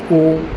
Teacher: उ में ओष्ठ ओठ लगते हैं